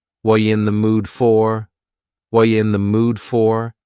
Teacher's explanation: The word are is gone, and the word you has been reduced to ya. So when we link together, what and you, super fast.